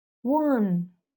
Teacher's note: This W gives you a little bit of U sound before the A, right? That's why the spelling in the transcription is one.